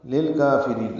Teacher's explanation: لام کو لام سے ملانا ہے، دونوں لام باریک پڑھنے ہیں ، دوسرے لام پہ اظہار ہے، کافرین میں کاف باریک پڑھا